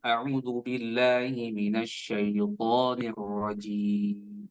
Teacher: jimnya itu kan mad arid disukun, maka harus panjang ya. Entah itu 2, 3, 4 dan seterusnya ya.